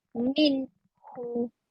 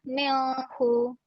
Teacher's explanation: Nun dibaca dengan jelas. Ha pun dibaca dengan jelas.